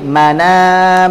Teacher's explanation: harokat fathah pada hamzah dipindahkan ke huruf nun sukun menjadi mana, kemudian hamzahnya dibuang, mana. Atau man adzina, asalnya man adzina menjadi manadzina, mana kemudian zina langsung, hamzahnya dibuang. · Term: naqal